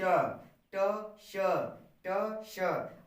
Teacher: जब आपका मूर्धा सा बोलना होगा जैसे बोलते हैं ट, उसी तरह बोलो श